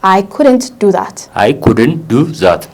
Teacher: በቃ ዲ እና ኤል ሳውንዱ ትንሽ ዋጥ ይደረጋል ማለት ነው